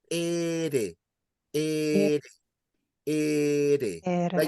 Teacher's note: tongue, when it's saying the single R, is just a little tap on the upper palate.